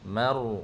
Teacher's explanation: ra takrir, ada takrir, ada getaran. Mar, bukan mor, mar, ya ma nipis, ra tu tebal.